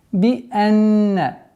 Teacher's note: Хамза мягкий. Нун с удвоением. И поэтому назализация, полноценная назализация в размере двух огласовок.